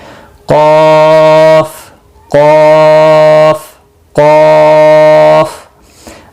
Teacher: ये मोटा क़ाफ है, मुस्तालिया में से है, पुर पढ़ा जाएगा 3 से 5 अलिफ के बराबर, इसको भी खींचना है।